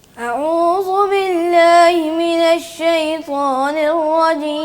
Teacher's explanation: نہ پتہ چلتا ہے کہ حمزہ پڑھا ہے, نہ پتہ چلتا ہے عین پڑھا ہے, وہ محمل سا.